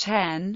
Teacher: Initial S followed by a vowel was changed to H.